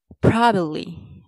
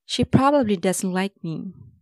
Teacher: Do stress the first part, pro.